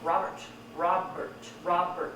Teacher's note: The first syllable is stressed.